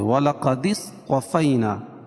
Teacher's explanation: صاد کو پر پڑھیں گے اور طا کو بھی پر پڑھیں گے۔